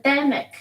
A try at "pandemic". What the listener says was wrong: Good. Pandemic. Very good.